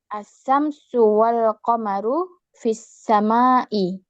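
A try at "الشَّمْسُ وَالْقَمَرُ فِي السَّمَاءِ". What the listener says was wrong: Betul.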